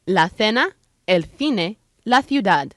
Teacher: in spain the rule is different a c placed before an e or an i is pronounced with a th as in thumb